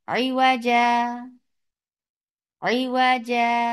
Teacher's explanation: عوجا جیسے آپ وقف کرتے ہیں، عوجا مد عوض ہو رہا ہے تو مد عوض کریں گے، تو مد عوض 2 counts لانگ ہوتا ہے تو ویسے ہی کریں گے عوجا عوجا.